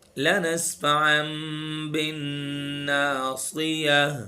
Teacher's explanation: दो पेश या नून साकिन के बाद बा आ जाए तो जो नून की आवाज होती है उसको हम खत्म करके मीम के अंदर कन्वर्ट कर देंगे